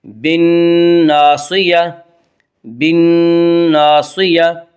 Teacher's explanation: بالناصیہ نون مشدد غنہ ہوگا، غنہ کی مقدار 1 الف ہے۔ بالناصیہ، بالناصیہ، صاد کو پر پڑھیں گے، صاد حروف مستعلیہ میں سے ہے۔